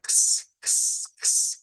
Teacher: La X suena a una KS en las palabras. Mira, X, cuando veamos X, suena a x, x, x, que es una K con una S unida